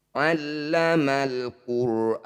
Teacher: allamal qu Alif diikuti lam sukun Nah kalau yang ini namanya izhar qamariah bunyi lam sukunnya baca dengan jelas